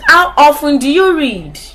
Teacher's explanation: The falling intonation, this means that your voice will fall, it will decline, the pitch will decline